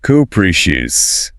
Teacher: Stress on the second syllable. First one is a schwa.